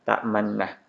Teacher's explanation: pada na ini dibaca dhammah, tapi dhammahnya terbuang dan hanya dibaca dengan isyarat bibir mencucu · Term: ishmam